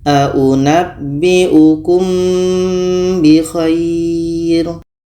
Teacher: ini Nah ada mim mati bertemu bah ini Ikhfa Syafawi kita dengungkan ketika kita sebut huruf mim kita sudah merasakan huruf ba